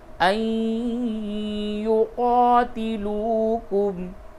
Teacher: نون ساکن کے بعد یا آیا، اس جگہ پہ ادغام مع الغنہ ہوگا